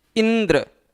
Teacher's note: इसको अगर बहुत धीरे बोलेंगे इंद्र तो नहीं, इंद्र। इंद्र शब्द का शुद्ध उच्चारण हो पाए, इस शुद्ध उच्चारण के नाते ई पर विशेष बल देना पड़ रहा है। और ये जो आप ई पर विशेष बल दे रहे हैं, इसके इसी बल देने की प्रक्रिया को ही हम क्या कहते हैं, बलाघात कहते हैं या स्वराघात कहते हैं।